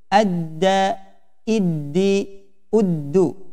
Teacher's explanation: ujung lidah bertemu gusi atas